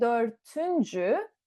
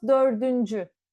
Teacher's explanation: So what happens here is 4, last letter is T, we added our suffix üncü, and it became dördüncü. We don't say dörtüncü, we convert T to D, and it becomes dördüncü